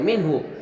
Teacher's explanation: نون ساکن مد ہا آیا تو یہاں پر اظہار حلقی ہوا، جہاں ہم ظاہر کر کے بغیر غنہ کے جلد ادا کریں گے